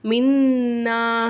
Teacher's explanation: நுனுக்கு மேலே சத்து இருக்கனால இதனால ஒரு செகண்ட் நல்லா அழுத்தி நம்ம வந்து நிப்பாட்டணும். மின்னா அப்படின்னு நம்ம நிப்பாட்டிக்கலாம்.